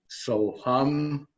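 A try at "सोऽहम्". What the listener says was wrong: Soham. See, so is a little softer. When it comes to, it's actually saha, aham. But when they come together, soham, soham, soham. The moment you will say soham, it's anglicized. It's not correct.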